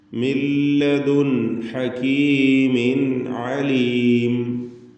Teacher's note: ഇതിൽ വീണ്ടും സാക്കിനത്തായ നൂനാണ്. ഹകീം ശേഷം ഹ ആണ് വന്നിട്ടുള്ളത്. അവിടെ ഇൽഹാർ ഹൽക്കി നൽകി മണിക്കാതെ വെളിവാക്കണം